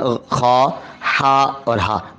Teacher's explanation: گلے کے بالکل شروع سے خا پر، گلے کے درمیان سے ہا اور گلے کے آخر سے ہا کی آواز آنی چاہیے